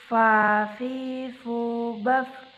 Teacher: Selanjutnya huruf fa menyentuhkan ujung dua gigi seri bagian atas dengan bibir bawah bagian dalam. Diucapkan dengan mengalirkan suara sekaligus dengan udaranya dengan lembut.